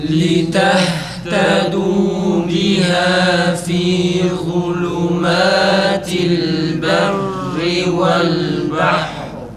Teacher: Sonra berri ra kalın çıkıyor.